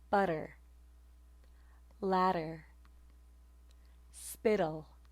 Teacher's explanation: vowel sounds following a stressed syllable and preceding an unstressed syllable it sounds like a flap of your tongue along the alveolar Ridge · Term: alveolar tap